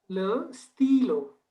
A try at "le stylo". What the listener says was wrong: Très bien, excellent, c'est parfait, it's perfect.